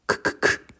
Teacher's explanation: 성대가 울리지 않는게 무성음 있데 크크크 이렇게 할 때 크 크크의 소리가 들리긴 하지만 성대를 울리지 않아요